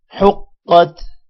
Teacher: قاف کو موٹا پڑھیں گے کیونکہ یہ حروف مستعلیہ میں سے ایک حرف ہے، حروف مستعلیہ موٹے حروف کو کہتے ہیں، حقت۔